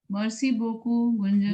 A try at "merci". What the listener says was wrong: Not mercy, dear. It is merci.